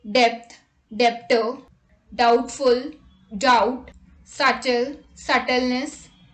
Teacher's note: b is usually not pronounced before t at the end of a root word